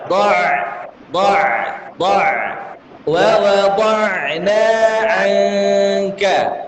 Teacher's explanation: Ain sukun itu mengalirkan suara.